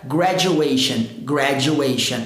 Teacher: vai gerar o som dos j como na palavra por exemplo jack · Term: som do j